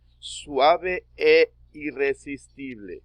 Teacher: Se lee como si fuera una sola sílaba. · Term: sinalefa